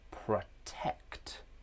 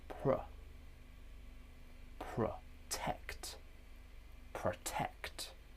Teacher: The first syllable is weak because we have a schwa sound.